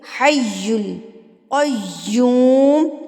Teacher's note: یا کے اوپر تشدید ہے تو ہم اس کو مضبوطی کے ساتھ اس کی ادائیگی کریں گے